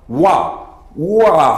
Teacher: 오와 하면서 처음에 오 소리가 나고 뒤이어 아 소리가 나죠. 그랬을 때 이 오가 바로 반모음 오가 된다.